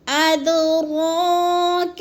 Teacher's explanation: دال ساکن ہے، حروف قلقلہ میں سے ہے، تو ہم نے اس کو ہلا کے پڑھنا ہے، قلقلہ کرنا ہے۔